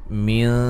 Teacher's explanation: نون ساکن کا باریک اخفا ہے